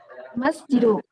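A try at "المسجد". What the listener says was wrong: Al-masjidu. Al-nya jelas dan tanpa tanwin. Al-masjidu.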